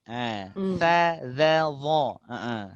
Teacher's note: tiga-tiganya sama-sama ujung lidah atau sebagian cakap ujung lidah keluar sikit